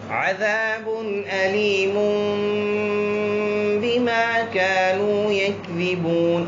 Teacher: ایسی نون ساکن تنوین کو ہم چھوٹی سی ساکن میم میں تبدیل کر دیں گے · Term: اقلاب